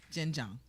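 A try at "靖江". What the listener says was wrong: Not Jinjiang. Jinjiang. So it's a tone thing.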